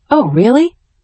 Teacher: Oh, really is great for showing surprise or interest. You should say it with a rising intonation.